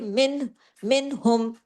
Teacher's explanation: नून साकिन के बाद हा है आ हरफ हल्की है इजहार हल्की यहां पे होगा कोई उन्ना नहीं होगा यहां पे मिन आगे हरफ हल्की है